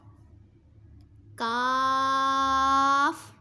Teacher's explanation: کاف زبان کی جڑ اور تالو کے سخت حصے سے ادا ہوتا ہے۔